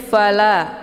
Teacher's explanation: la dibaca panjang 2 harokah. Ini dinamakan dengan mad tabi'i zahiri. Tandanya ada alif, sebelumnya harokah fathah.